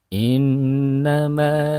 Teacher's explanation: ada nun yang bertasid, ditahan, dipanjangkan